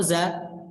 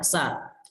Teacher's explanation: yang membedakan antara keduanya yang paling terlihat, yang paling jelas adalah bergetar suara atau tidak, meskipun dari segi aliran suara itu juga termasuk gitu.